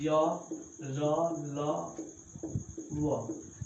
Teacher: वह व्यंजन वर्ण जिनके उच्चारण न तो स्वर वर्ण में की जाती है न व्यंजन वर्ण में, जिनका उच्चारण जीभ, तालु, ओष्ठ, मूर्धा से स्पर्श से होती है परंतु पूरा स्पर्श नहीं कर पाती, अर्थात किसी जगह पूर्ण रूप से स्पर्श नहीं कर पाती है, उसे अंतःस्थ वर्ण करते हैं।